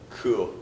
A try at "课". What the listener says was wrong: 크. 지금 크 오처럼 들렸어요. 크.